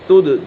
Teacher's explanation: دال کے اوپر قلقلہ ہو رہا ہے